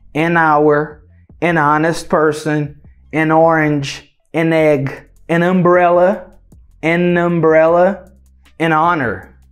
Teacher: esse N, ele entra para fazer essa conexão, para fazer esse linking sound. Por isso que a gente fala an hour, an honest person, an orange, an egg, an umbrella, an honor.